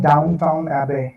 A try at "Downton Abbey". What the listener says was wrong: Downton Abbey. Not Downtown Abbey. There is not the W. Downton. It looks like downtown.